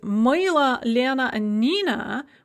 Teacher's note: we have an o or an ah that is after the stress and so they're all pronounced kind of an uh sound